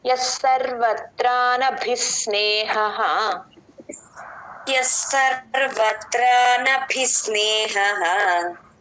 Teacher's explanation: ఎస్ సర్వత్రా నభి, భీ మహాప్రాణం, ఆ భీ నుంచి సాని పట్టుకోండి.